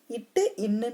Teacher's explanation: நாவின் நுனியும் அன்னத்தின் நுனியும் பொருந்துவதால் பிறக்கிறது